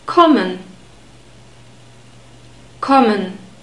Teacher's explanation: Kommen contains an open O sound, or it's the same sound we have in morning, but in German it's always a short sound.